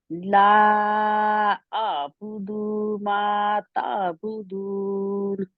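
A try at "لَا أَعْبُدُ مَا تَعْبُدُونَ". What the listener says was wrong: مجھے سمجھ نہیں آتی کہ ساری بہنوں نے دال کو لمبا کیوں کھینچنا ہے لا اعبد ما تعبدون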